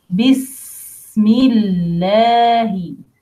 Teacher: Lam here is light. Lam the name of Allah because preceded by kasra.